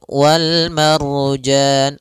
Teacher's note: ada Ro sebelumnya fathah maka dia ro tebal